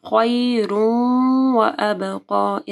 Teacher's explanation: ادغام آ رہا ہے واو کے ساتھ، غنہ کے ساتھ۔ وابقی، با کے اوپر کلکلا ہوگا اور قاف کو موٹا پڑھنا ہے اور کھڑی زبر کو بھی پڑھنا ہے۔